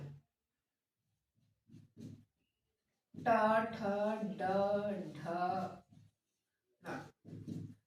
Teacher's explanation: ट वर्ग के अक्षर है मूर्धा से बोले जाएंगे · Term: मूर्धन्य व्यंजन